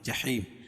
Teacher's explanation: جحیم یا ساکن سے پہلے زیر ہے تو یا مدہ، اس کو ایک الف کے برابر کھینچ کے پڑھیں گے